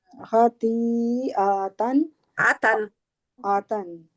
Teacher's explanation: आ को और लंबा नहीं करना, आ के आगे अलिफ नहीं है।